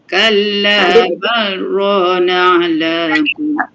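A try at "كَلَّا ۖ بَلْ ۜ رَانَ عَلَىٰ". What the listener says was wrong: Jangan masukkan kepada ra. Walaupun lam dengan ra ni dia ada kalau dia ada hukum mutajanisai tu kan. Okey, tapi ini untuk kata memang berhenti terus. Bal lam tu dia jelaskan dia punya makhraj dia.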